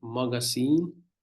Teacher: Stress is on the last vowel here.